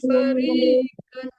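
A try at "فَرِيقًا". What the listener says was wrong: ditebalkan mukafnya ya, fariqan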